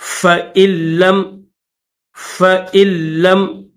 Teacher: فَإِن لَّمْ، اس میں فا کے بعد حمزہ ہے اور حمزہ کے بعد نون ہے، نون کے اوپر یہ جزم ہے، اور اس کے بعد لام ہے، لام کے اوپر تشدید بھی ہے اور زبر بھی ہے، تو یاد رکھیے گا اس میں حمزہ کے بعد یہ جو نون ہے، اس نون کو نہیں پڑھیں گے، ڈائریکٹ حمزہ کو لام کے ساتھ ملائیں گے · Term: نون یہاں پر سائلنٹ